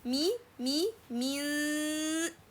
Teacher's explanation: The tip of the tongue should be away from the gums for noon articulation point. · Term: Ikhfaa